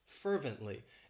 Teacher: It has 3 syllables and the stress is on that first syllable